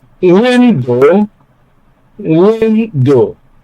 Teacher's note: Take note of stress on the first syllable